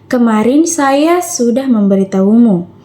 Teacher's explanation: Tekanan pada kata saya menekankan bahwa yang memberitahumu adalah saya, bukan orang lain.